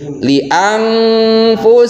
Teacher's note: Ketika nun sukun atau tanwin ketemu dengan huruf fa, maka nun sukun atau tanwinnya itu disamarkan. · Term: huruf ikhfa